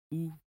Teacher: They move forward and in a rounded way. For the round oo, your lips are rounded but not as forward as o.